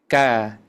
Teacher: Kaf lidahnya didekatkan ya pangkal lidah ke langit-langit didekatkan. Terus ketika membaca harakat dijauhkan.